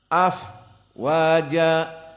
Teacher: di saat disukunkan fa, afwaja, karena fa masuk kepada huruf al-hams.